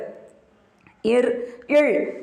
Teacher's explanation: இர் இழ் ஆகிய இரு மெய்களும் மேல்வாயை நாக்கின் நுனி வருடுவதால் பிறக்கின்றன.